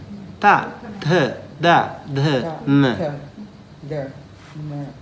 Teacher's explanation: The tongue actually, most of the tongue, the front part, touch the first row of the teeth, right? First few teeth, maybe 5, 6 teeth, we touch.